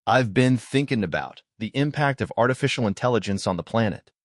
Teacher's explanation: ate the T at the end of about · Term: elision rule